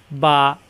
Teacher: আর উচ্চারণ দুই ঠোঁট থেকে, মেলানো ঠোঁট ছেড়ে দিলেই হয়ে যায় বা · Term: দুই ঠোঁট থেকে উচ্চারণ